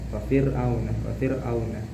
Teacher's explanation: Fir'auna di sini ada 2 hukum yaitu huruf ro-nya dibaca tarkik ataupun tipis. Fir'auna dan huruf linnya di sini juga ada huruf wawnya yang disukun oleh huruf yang sebelumnya berharokat fathah.